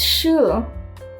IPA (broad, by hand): ʃ